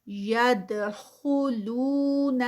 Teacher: ناسا یدخلون ید پہ قلقلہ. دال ہے اور دال جو ہے وہ جزم کے ساتھ تو قلقلہ